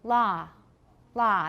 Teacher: in california it's la la they don't have so much rounding it's more like ah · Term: open o